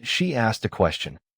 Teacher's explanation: The base verb ask ends with K, a voiceless sound. Add the T sound